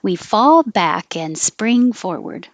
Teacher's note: if you don't take a pause you'll connect the K to the a